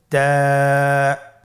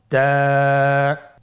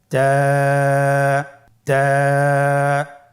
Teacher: জিহ্বার আগা সামনের উপরের 2 দাঁতের গোড়ার সঙ্গে লাগিয়ে উচ্চারিত হয়।